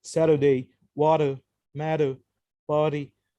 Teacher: in american english when the letter t is in the middle position in a word it sometimes changes to a soft d happened either when it's between two vowels or when it's between